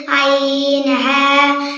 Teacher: 2 নম্বর মাখরাজ হলকের মধ্যখান হইতে